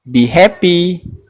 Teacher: Oke, walaupun kalimat tersebut tergolong kalimat imperatif, namun cara pengucapannya tidak seperti ketika kita menggunakan imperatif dengan bentuk verb 1. Nada atau intonasi yang sering dipakai biasanya lebih mendatar atau menurun.